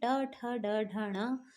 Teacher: उच्छिप्त स्वर इसलिए कहलाते हैं क्योंकि जब भी हम ट ठ ड ढ ण इनको बोलते हैं, तो हमारी जो जिह्वा है, जीभ है, वो ऊपर हमारे मूर्धन्य को थोड़ा सा टच करके जीभ हल्की सी मुड़ रही है, मतलब मूर्धन्य नहीं, ऊपर का जो तालु है ऊपर का, वहाँ पे टच करके जो है हमारी जीभ हल्की सी मुड़ रही है, इसी को कहते हैं मूर्धन्य, यानी कि मुड़ना।